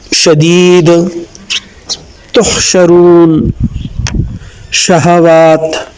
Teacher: زبان کے درمیان اور تالو کے درمیانی حصے یعنی شجریہ پورشن میں تھوڑا سا گیپ ہے، اور اس گیپ سے ہی شین آگے منہ کی طرف ٹریول کرتا ہے۔